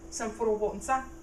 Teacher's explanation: In this instance, Samfuro has a low tone